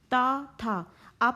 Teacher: आपकी जीभ जो है ऊपर के दांतों के पिछले भाग में जुड़ते हुए बोल रही है। ता था दा, धीरे धीरे उच्चारण करें तो आपको समझ में आएगा।